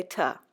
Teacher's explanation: It should be noted that within one sentence, we could have two uses of t and one use of da, another common replacement for the. A simplification of the interdental fricative.